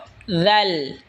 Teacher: জিহ্বার আগা সামনের ওপরের দাঁতের আগার সঙ্গে লাগা উচ্চারণ হবে দাল